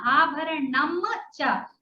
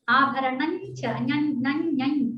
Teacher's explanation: The ma changes to inya. Okay. So the cha, when it happens to combine with the cha, it changes to the Varga Panchama of the cha.